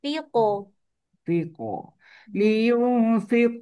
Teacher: Qalqalah qaf kekalkan tebal dia.